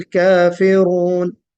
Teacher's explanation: कुल या अय्युहल काफिरून, मद करना है। काफिरून में रा को पुर पढ़ना है, रा को मोटा पढ़ना है।